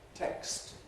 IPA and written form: tekst (Text)